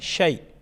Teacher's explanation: شیء، یا ساکن سے پہلے حرف پر زبر ہے، شیء، تو یہاں پر بھی اس کو ہم کس طرح پڑھیں گے، اور یہاں پر کیا ہے، یہاں پر یا لین ہے، شیء، یا لین کو ہم جلدی پڑھتے ہیں اور نرمی کے ساتھ ادا کرتے ہیں